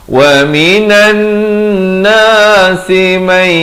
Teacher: Wa minan nasi may, masuk berserta dengung, daripada man jadi may